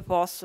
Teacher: la sillaba finisce per consonante, il dittongo non c'è